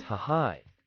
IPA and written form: haɪ (high)